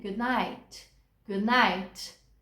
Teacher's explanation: E o good night, com o D mudo, soando bem leve